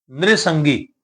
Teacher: ਅੱਧੇ ਰਾਰੇ ਦਾ ਉਚਾਰਨ ਹੋਣਾ ਤੇ ਜਿਹੜੀ ਸਿਹਾਰੀ ਲੱਗੀ ਹੈ ਉਹ ਵੀ ਰਾਰੇ ਦੇ ਉੱਪਰ ਉਚਾਰਨ ਹੋਏਗੀ